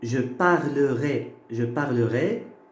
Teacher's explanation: Au futur simple, ça se termine AI. Donc vous mettez toujours le et fermé. C'est toujours le et fermé.